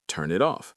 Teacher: The N from turn jumps to it, and the T from it jumps to off. It becomes one smooth word, which means if a learner's trying to enunciate turn, then pause off separately, they are actively inserting 3 little pauses and just destroying the rhythm. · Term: consonant-vowel linking